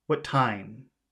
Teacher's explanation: let's make what short and time long